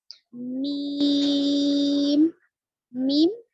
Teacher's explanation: दोनों होठों के सूखे हिस्से से निकलता है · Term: मीम